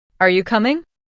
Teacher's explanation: Say this with a rising tone at the end.